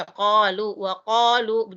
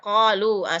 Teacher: Sebenarnya salah kalau kita menyebut qalu, bukan bukan qalu, tapi qalu. Jadi dia di tengah-tengah tenggorokan, qa di tengah. Jadi bukan o, bukan bibir yang membentuk huruf o.